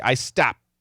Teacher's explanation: I'm stopping with my lips, the P, and inside my mouth, I'm hitting the T. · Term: stop sounds